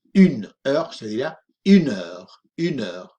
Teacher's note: cuando decimos el número con la palabra hora al lado, se fusionan, es una única, fonéticamente es una única expresión